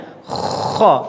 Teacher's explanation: Kha, perhatikan harus ada ngoroknya ketika hendak mengucapkan kha. Yang nampak adalah ngoroknya dulu.